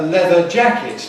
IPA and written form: ˌleðə ˈʤækɪt (leather jacket)